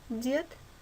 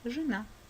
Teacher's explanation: Буква Е под ударением Е – дед, без ударения И – жена.